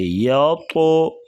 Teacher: یا زبر طا یطو، طا کو موٹا کریں گے اور قلقلہ کریں گے